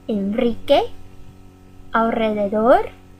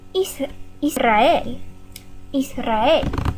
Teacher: So after n, l, or s, we will use a trill.